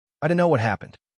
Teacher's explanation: Here, the o in don't and the k in know are barely articulated, almost swallowed whole. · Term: dunno